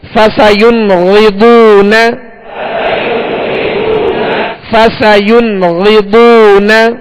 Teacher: غین اور بہت دونوں کو پر پڑھیں گے, یعنی موٹا پڑھیں گے, اس لیے کہ یہ حروف مستعلیہ میں سے ہے.